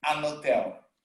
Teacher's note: if you listen to a native speaker saying an hotel, he's not pronouncing the H